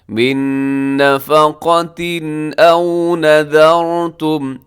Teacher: آخر میں تنوین کے بعد حمزہ ہے، اظہار ہوگا، غنہ نہیں ہوگا، تیزی سے پڑھیں گے